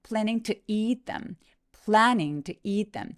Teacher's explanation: eat t가 만나서 한 번만 발음하니